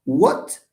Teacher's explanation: The t of what is not aspirated because it's at the end.